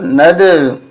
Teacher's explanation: نون کو دال کے ساتھ ملائیں گے اور قلقلہ کریں گے